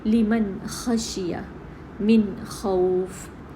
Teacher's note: اظہار کا مطلب بالکل کلیئر پڑھا جانا، بالکل وضاحت سے، کوئی چیز اس میں چھپی نہیں ہے، نون بالکل کلیئر پڑھا جا رہا ہے، اس کا اظہار ہو رہا ہے۔